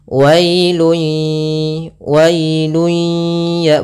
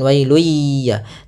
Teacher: Idgham artinya kita memasukkan. Apa yang kita masukkan adalah suara tanwinnya atau suara nunnya ke huruf ya, maka hilang bunyinya, tapi dia masih menyisakan suara bunyi dengan gunnahnya. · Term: idgham bi gunnah